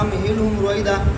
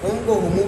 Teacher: صلہ کا مطلب یہ ہے کہ ہم کو ہمو پڑھیں گے